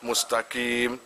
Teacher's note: Lah karena orang ini belum biasa makhraj, belajar makhraj itu, akhirnya qafnya itu nggak terbaca tapi terdengar kaf